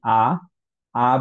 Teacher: lips কোথাও touch করছে না টাং কোথাও টাচ করছে না সো অ্যাকচুয়ালি হচ্ছে লাংস থেকে ডিরেক্টলি সাউন্ডটা বের হয়ে যাচ্ছে